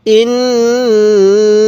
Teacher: নুনের মধ্যে আমরা তিন আলিফ টান দিব